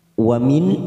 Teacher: nun sukun bertemu hamzah, namanya bacaan idhar halqi. Kita baca jelas tanpa mendengung.